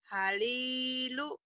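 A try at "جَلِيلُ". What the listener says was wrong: Halilu, halilu, halilu. Mana halilu? Iya, bukan ha tapi jim. Jalilu.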